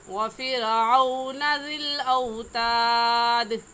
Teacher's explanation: रा जब साकिन आ जाए तो उससे पहले वाले लफ्ज़ को देखते हैं कि उससे पहले वाले लफ्ज़ के ऊपर कौन सी हरकत है। रा साकिन से पहले फ़ा है और फ़ा के नीचे ज़ेर है, तो इस रा साकिन को बारीक पढ़ेंगे